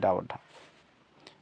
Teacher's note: ड और ढ स्पर्शी व्यंजन स्पर्शी व्यंजन होते हैं